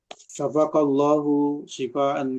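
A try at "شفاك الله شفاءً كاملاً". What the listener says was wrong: syafa panjang. Syafa panjang.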